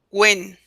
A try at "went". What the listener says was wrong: Went. T at the end. Went.